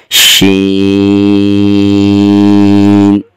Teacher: زبان کا درمیان اوپر تالوں کے درمیان کے ساتھ لگ رہا ہے، جہاں سے حرف ادا ہوا تھا جیم، اسی جگہ سے اس حرف کو بھی شروع کیا جائے گا۔